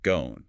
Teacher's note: words that have a longer O sound in RP like gone shift completely. It becomes an elongated sound. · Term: elongated own sound